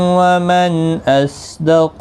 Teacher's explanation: نون ساکن کے بعد حمزہ آیا ہے اظہار حلقی ہوگا، صاد مستعلیہ ہے پر پڑھا جائے گا، قاف بھی پر پڑھا جائے گا، حروف مستعلیہ ہے.